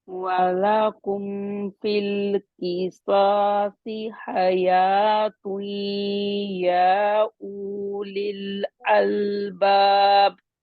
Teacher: الف کو باریک پڑھیں گے اور یا کی پوری مد آپ نے نہیں کی تھی